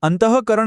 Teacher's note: જો એ બે ટપકાનો ઉચ્ચાર હ જેવો થતો હોય તો એની આગળનો અક્ષર આપોઆપ ગુરુ બની જાય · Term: વિસર્ગનો